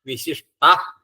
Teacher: വിശിഷ്ട, ഷ്ടന്നേ ഉള്ളൂ, ഷ്ടാന്ന് ആയി പോവരുത്.